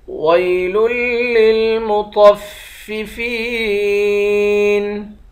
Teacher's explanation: طا کو موٹا پڑھیں گے، طا موٹے حروف میں سے ہے · فا کو یا کے ساتھ ملا کر یا کو ایک الف کی مقدار کھینچیں گے، یا حروف مدہ ہے۔